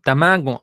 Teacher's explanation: esta G la pronuncia nasal Entonces no dice tamago Ah dice tamago Ah con una gna